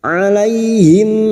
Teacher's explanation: mim sukun dibaca jelas tanpa mendengung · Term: izhar syafawi